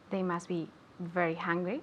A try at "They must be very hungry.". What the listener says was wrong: Okay, and be careful. They must be very hungry. Okay, not very angry. Angry is this.